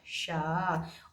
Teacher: वो शाह हमारा कहाँ से बोला जाता है, मूर्धा से बोला जाता है